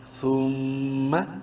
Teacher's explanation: غنہ کریں گے میم مشدد کی وجہ سے